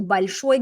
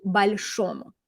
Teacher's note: Okay, so notice большому, the stress was on this syllable, and that's because in the original of the adjective, the stress is on the final syllable as well. So we keep it on the final, we keep it on the o, even in the dative ending